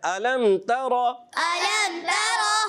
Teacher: را کو پر کرنا ہے، تا کو باریک رکھنا ہے